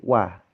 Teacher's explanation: fathahnya huruf wawu itu masih tipis sebenarnya. Jadi kita bacanya masih wah, gitu ya.